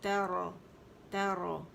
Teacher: تا باریک ہے، را موٹی ہے، تو یہ بھی ہمارا اندر سے منہ کھلے گا اور ادا ہوگا